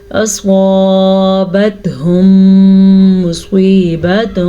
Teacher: میم ساکن کے بعد دوبارہ میم متحرک آ جائے تو دونوں میموں کو آپس میں ملا دیتے ہیں اور غنے کے ساتھ ملاتے ہیں، اسے ادغام شفوی کہتے ہیں.